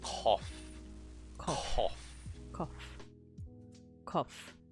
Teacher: K that is pronounced in the soft palate, the back of the mouth, rather than the hard.